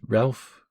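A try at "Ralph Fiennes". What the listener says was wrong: Or I think it's Ray Fiennes is how it's pronounced. But it's spelled Ralph.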